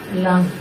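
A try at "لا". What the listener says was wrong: না লম্ব করে হবে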